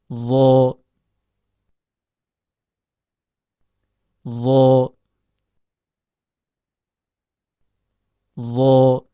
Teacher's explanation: huruf d keluar dari ujung lidah yang bertemu dengan ujung gigi seri atas · naiknya suara ke arah langit-langit atas atau dengan kata lain dibaca tafkhim